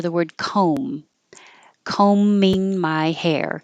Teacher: you see the B, but you don't hear the B at all. It just disappears.